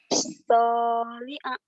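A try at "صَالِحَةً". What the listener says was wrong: soliha itu bukan ain ya. Soliha bukan soliha.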